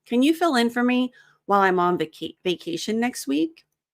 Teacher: The L in while connects to the I in I'm. The M in I'm connects to the O in on.